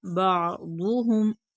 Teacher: आइन हर्फ हल्की हलक से अदा होगा, दाद पर पढ़ेंगे, हर्फ मुस्तालिया है।